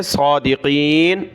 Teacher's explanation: ان کنتم صادقین، صاد اور قاف کو موٹا پڑھنا ہے، اس صاد کو اوپر کھینچیں گے کیونکہ کھڑا زبر ہے · صاد اور قاف کو موٹا پڑھنا ہے، اس صاد کو اوپر کھینچیں گے کیونکہ کھڑا زبر ہے، صادقین۔